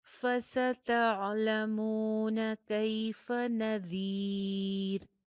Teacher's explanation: فستعلمون کیف نذیر, فستعلمون، مون، میم کے ساتھ واو مدہ ہے، ہونٹ میکسیمم گول